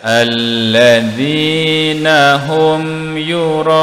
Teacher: di sini mad wajib muttasil 4 atau 5 harakat. Huruf mad di sini huruf alif selepasnya huruf hamzah, jumpa dalam satu perkataan.